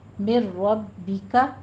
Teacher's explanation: میر ربک میں بھی نون ساکن کا قاعدہ ادغام بلا غنہ کریں گے، اور آگے رو مفخم پڑھی جائے گی، با کے اوپر تشدید ادا کرتے ہوئے نیچے کسرہ ہے، زیر کی آواز کو باریک رکھیے